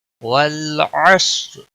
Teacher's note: والعصر، واللام کو ہلانا نہیں، صاد حروف مستعلیہ میں سے ہے، اس کو پر پڑھنا ہے یعنی موٹا پڑھنا ہے۔ را کے نیچے زیر ہے، وقف کی صورت میں را بھی پر پڑھی جائے گی۔